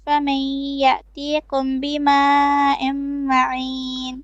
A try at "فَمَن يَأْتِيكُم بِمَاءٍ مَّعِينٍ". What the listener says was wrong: فمن يأتيكم كاف and then يأتيكم 2 beats of إخفاء ميم شفوي here بماء معين. Just pay attention to the little things which you need to correct, and you read a bit too fast to be corrected, if that makes sense, on live.